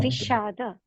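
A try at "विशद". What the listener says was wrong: You said we. We, sha, the. All short vowels. We, sha, the. Vishada, not vishada.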